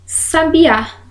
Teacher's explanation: Sabiá que é uma oxítona última sílaba é a tônica